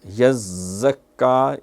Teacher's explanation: یہ زا جو ہے صفت صفیر ہے، اس میں سیٹی ہوتی ہے